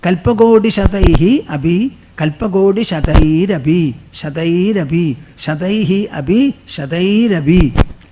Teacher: when the visarga is followed by a soft vowel, it will get converted into repha, rakara